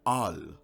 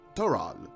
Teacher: r becomes l when at the end of a word